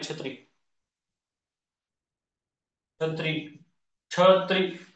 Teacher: वरच्या वरी जिभेचा शेंडा थोडासा वरी टाळावा लागतो, छ चा उच्चार होतो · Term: तालव्य वर्ण